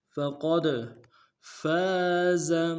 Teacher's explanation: قوف کو موٹا ادا کرتے ہوئے دال کے ساتھ ملانا ہے، دال حروف قلقلہ میں سے قلقلہ کریں گے. فقد فاز، فا کو نون سے ادا کریں گے، فا کے ساتھ لف مدہ ایک مقدار میں کھینچیں گے، زا کو نون سے ادا کریں گے.